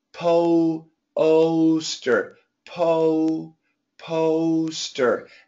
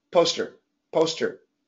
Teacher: when we say it quickly, poster, poster, we don't really finish the diphthong, just the first part.